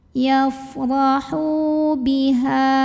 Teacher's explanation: Maka cara bacanya ha yang dhammah dipanjangkan 2 harokat. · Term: mad tabi'i